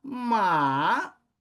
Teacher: terceiro tipo de tom, que é um que começa elevado, cai e depois recupera